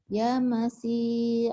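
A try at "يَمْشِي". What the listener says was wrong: Yam shi nih virus tuh. Sinnya keluar. Yam shi.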